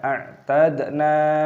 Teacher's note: Inna, 'ain has a sukun, this is read dead, we read a'tad. A'tad , dalnya memiliki sukun, ini dibaca sebagai qalqalah, bunyinya dipantulkan.